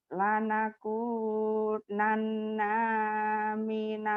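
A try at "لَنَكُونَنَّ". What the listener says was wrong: Pendek nanya.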